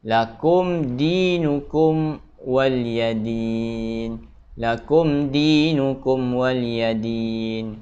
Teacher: Kerana pada kalimah tersebut ataupun pada dua huruf ataupun dua kalimah yang bertemu tersebut, mim bertemu dal dan mim bertemu waw, bacaan dia tidak boleh gunnah. Terbaca dengan jelas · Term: izhar syafawi